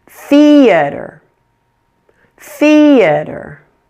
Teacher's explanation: the first has the primary stress fie this should be much louder and longer than the other two syllables in the word · You note that first syllable is much louder and longer.